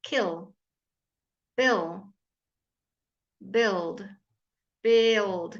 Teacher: Kill, bill, so it's not quite the same because of the eel, the L, again the L changes the I slightly. There's a kind of a slide into the L.